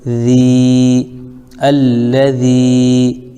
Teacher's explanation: یا ساکن سے پہلے ذال کے نیچے زیر ہے، اس لیے یا مدہ ہو جائے گا، اس کو تھوڑا کھینچیں گے